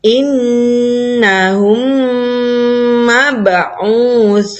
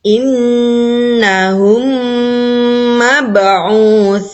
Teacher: Memasukkan bacaan mim sukun pada mim yang berharokat disertai dengung. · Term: idgham mithli